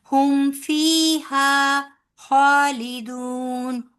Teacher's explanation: इसी तरह ये यहां भी आपने याम फिर खा ली। फीहा जितना हा लंबा होगा उतना ही फी भी लंबा होगा। · جتنا ہا لمبا ہوگا اتنا ہی فی بھی لمبا ہوگا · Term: یامت